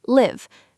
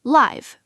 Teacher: The verb live has a short I sound, live, rhymes with give. The adjective live has a long I sound, live, rhymes with five.